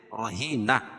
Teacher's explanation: گول تا کو وقف کی حالت میں ہائے ساکنہ سے بدل دیں گے